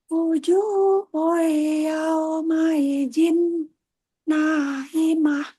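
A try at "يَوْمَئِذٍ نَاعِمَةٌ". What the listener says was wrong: Saya dengarnya masih jin atau zin tuh. Zin. Zazizu. Zi.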